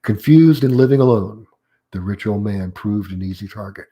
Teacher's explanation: Confused and living alone, comma, the rich old man. And that's called an unfinished sentence. So therefore, I have a rising intonation on the end of it.